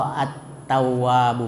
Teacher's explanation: Jadi lamnya itu dimasukkan ke dalam ta sehingga lamnya tidak terbaca. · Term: huruf syamsiah